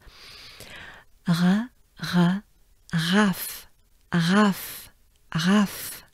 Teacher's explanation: Then you take a good breath and you do the French R, which is exhaling with your tongue down in your mouth.